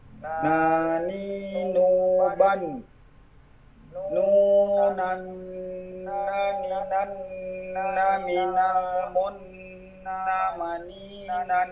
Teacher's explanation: Huruf nun tempat keluar huruf ujung lidah setelah lam